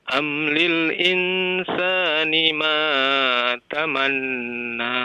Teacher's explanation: Tamanna ada tasydid, ditahan 2 harokat ya.